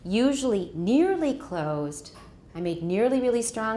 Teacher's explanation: we still should use a continuation rise when we've got something coming